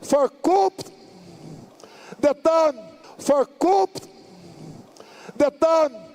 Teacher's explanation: Então ele fala for coup, ele dá um P no final, que não é pra ter